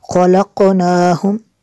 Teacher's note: قاف پہ قلقلہ ہوگا، قاف حروف مستعلیہ میں سے ہے